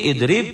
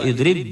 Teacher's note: qalqolahnya jadi hilang masuk ke ba